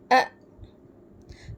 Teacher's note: بالکل حلق کا نیچے کا آخری حصہ، اس کو اقصی حلق کہتے ہیں، اور وہاں سے حمزہ اور ہا ادا ہوتے ہیں